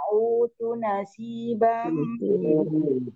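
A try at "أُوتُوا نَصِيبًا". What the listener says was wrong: Tuh-tuhnya panjang.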